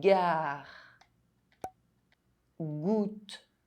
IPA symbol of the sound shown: g